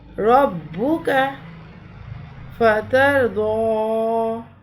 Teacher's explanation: را کے اوپر زبر ہے، را پہ زبر یا پیش ہو تو را کی ادائیگی بھی پور ہوتی ہے، زیر ہو تو را کی ادائیگی باریک ہوگی.